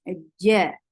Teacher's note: Jim should be from middle of your tongue, touching the middle part of your palate, but there shouldn't be any ch sound in this. You have to seal whole of your palate, not to escape any sound, because this is Jim.